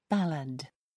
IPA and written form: ˈbæləd (ballad)